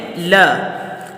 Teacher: اگر آپ سے اس حرف کا مخرج پوچھا جائے تو آپ نے فوراً بتانا ہے کہ زبان کی نوک اور تالو کا ابتدائی حصہ ملانے سے لام کی آواز پیدا ہوتی ہے